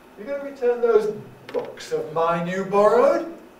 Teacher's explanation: it's a yes no question so it's gonna tend to have a rise